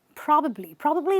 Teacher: this word is probably where you stress the pra